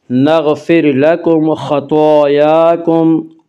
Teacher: خا کو پر پڑھیں گے، خا حروف مستعلیہ میں سے ہے